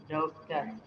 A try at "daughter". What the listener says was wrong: Daughter ya. Daughter. Jadi baca daughter ya, bukan dokter ya. Jadi dibaca daughter. Huruf G sama H itu nggak dibaca ya.